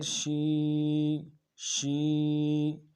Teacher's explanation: یا مدہ ہے، ایک الف دار میں کھینچیں گے